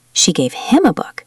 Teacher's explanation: If I stress book, it means she gave him a book, not something else.